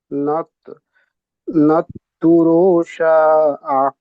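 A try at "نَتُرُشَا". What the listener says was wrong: তুরু নেই দেখেন এখানে, নাত তুর,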